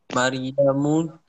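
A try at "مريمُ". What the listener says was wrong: okay. Maryamu, okay.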